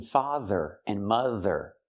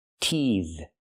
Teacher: teethe is a verb, and the TH makes the voice sound, like in father and mother